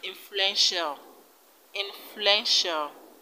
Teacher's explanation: in the word influential influential the stress is on fluent